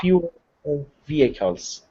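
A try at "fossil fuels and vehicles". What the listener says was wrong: yeah, you just forgot the S. Your pronunciation is fine, but you forgot to add the S sound.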